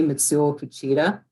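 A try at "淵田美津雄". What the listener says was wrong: The last name, probably not. the pronunciation is right, but the stress is not. It's kind of random in Japanese. And it's not an emphasis on a syllable like it is in English. It's a pitch thing.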